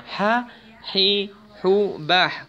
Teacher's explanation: Kalau ha sifatnya hams, berarti harus ada udara yang keluar.